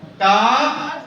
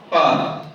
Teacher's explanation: حروف مستعلیہ میں سے کاف کا مخرج الگ ہے، قاف کا الگ ہے. کاف کا مخرج کیا ہے؟ زبان کی جڑ اور تالو کے سخت حصے سے ادا ہوتا ہے. قاف کا مخرج زبان کی جڑ اور تالو کے نرم حصے سے ادا ہوتا ہے